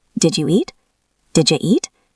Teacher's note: When the d at the end of did meets the y at the start of you, they blend together to make a j sound like jump or juice. So did you becomes did you.